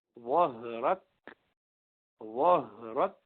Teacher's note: ہا جو ہے ذرا لمبا کیونکہ یہ رخوا والا ہے, اور کاف شدید ہے تو جلدی سے بند ہو گیا, آگے ہمس کیا اس کے.